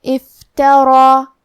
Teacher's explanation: کلمت افترا میں یہاں را کی حرکت ہے زبر، لہذا ہمیں را کو اور اس پہ جو کہ کھڑا زبر ہے تو یہاں مد الف ہے، تو ہم را کو اور مد الف کو دونوں کو تفخیم سے مطلب بھاری آواز میں پڑھیں گے